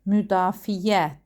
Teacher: Müdafiə sözü isə müdafiə deyə tələffüz olunur. Y səsi artırılır. Səs artımı baş verir.